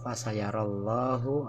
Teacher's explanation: lafaz Allah ini hukum bacaannya tafhim, karena sebelum lafaz Allah terdapat huruf ro yang diberi harkat fathah